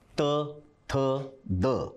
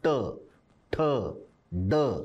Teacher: त थ द हे जीभ दाताला लावून तर ट ठ ड हे जीभ टाळूला लावून बोलले जातात